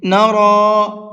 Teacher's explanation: را کو منہ بھر کے پڑھیں گے